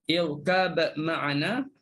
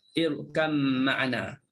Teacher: Tapi kalau Bazzi, kita boleh buat dua. Sama ada kita nak baca dengan izhar, irkab ma'ana, ataupun kita nak baca dengan idgham, irkam ma'ana.